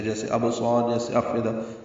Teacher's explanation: لام ساکن پہ اظہار قمری ہے کیونکہ آگے حمزہ حروف اظہار میں سے ہے